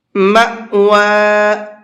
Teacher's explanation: ہی المأوى، مأوى، یہاں یہ حمزہ ساکن ہے اور حمزہ ساکن جھٹکے کے ساتھ میں پڑھا جاتا ہے